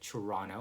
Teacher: some people would call it Toronto with ch. Some would call it with tia, Toronto.